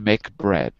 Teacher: When one of those is followed by a word beginning with a different consonant, usually a M or a N, doesn't have to be, but usually one of those, there's no air released at the end of the first consonant, and there's a very smooth change to the second consonant